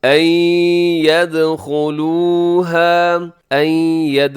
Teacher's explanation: یہاں نون ساکن کے بعد یا یرملون کا ادغام غنے کے ساتھ، این ید، آخر میں دال کو قلقلہ بھی کیجیے گا، دال حروف قلقلہ میں شامل ہے، یعنی کہ اس کی آواز کو ڈبل کرنا ہے، ید، این یدخلوها۔